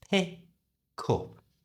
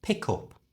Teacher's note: the k sound at the end of pick is moved over to the front of up